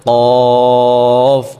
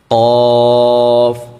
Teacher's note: কফ উচ্চারণের সময় আমরা কন্ঠ থেকে উচ্চারণটা করতে হবে কন্ঠনালী থেকে এবং মুখ থেকে না